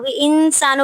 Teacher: نون ساکن کے بعد سین آ رہا ہے، تو یہاں پہ اخفا ہوگا، آواز کو تھوڑی دیر کے لیے ناک میں چھپائیں گے